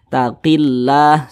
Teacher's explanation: maka lafaz Allahnya ini dibaca tarkik, dibaca tipis